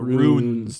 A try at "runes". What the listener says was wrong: No, not ruin. You say I hear you saying the word ruin. Runs.